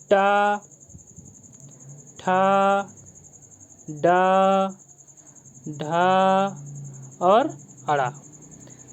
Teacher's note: ये हमारे टा वर्ग में आते हैं। इनका सभी का उच्चारण स्थान मूर्धा होगा।